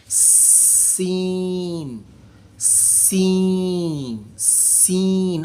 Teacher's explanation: زبان کی ٹو نیچے والے دانتوں کے اندرونی جڑ کے ساتھ ٹچ کرے گی. سیٹی نکالیں گے اور سیٹی کی آواز کے ساتھ اس کو ادا کریں گے.